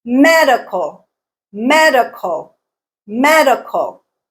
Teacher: me is the stressed syllable